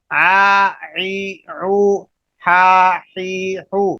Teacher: تو آج آپ نے دو لفظ پڑھے ہیں عین اور ہا، آ عی عو، ہا حی حو، یہ مخرج نمبر 2 تھا، درمیانی حلق، حلق کا درمیانی حصہ جو کہ درمیان میں آتا ہے، اس سے عین اور ہا ادا ہوتے ہیں